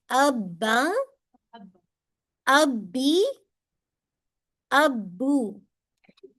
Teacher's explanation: बा जो है दोनों होंठों के अंदरूनी वेट यानी जो गीला हिस्सा है, उसको आपस में मजबूती से स्ट्रांगली मिलाने से होता है।